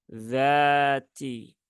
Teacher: di ujung lidah gigi seri atas dza Az ID UD dzati dalnya ada Alif setelah fathah maka cukup dibaca panjang dua harakat jangan lebih panjang lagi